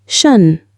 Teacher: In English, this ending is never pronounced Tion, it's always pronounced shun. A sh sound followed by a weak schwa vowel and an n.